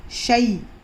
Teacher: یا لین کو ہم کو نرم آواز سے جلدی ادا کرنا ہے